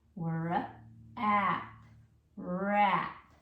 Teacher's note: when I say it quickly, that W is going to kind of disappear. It's just barely there.